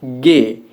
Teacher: bunyi G yang mendapatkan hambatan pada belakang lidah atau dorsum dan langit-langit lunak